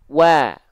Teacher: Nah, jadi dia dilafalkan buka mulut sambil senyum. Buka mulut untuk menyempurnakan vokal A dari harokat fathahnya tadi, sambil senyum untuk menjaga kadar tipis dari huruf tersebut.